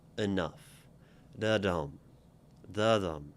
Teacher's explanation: And when we say it, you can sort of feel the fact, it is very much a feel thing, that enough, is sort of, happens in passing. And the word really lands on nuff, right? If we were to think about it like musically or like a rhythm, right? · So one is kind of light, comes up, and nuff comes down. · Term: stressed, unstressed and stressed